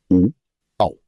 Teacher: 8, कंठोष्ठ्य वर्ण। कंठ और ओष्ठ दोनों से बोले जाने वाले वर्ण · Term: कंठोष्ठ वर्ण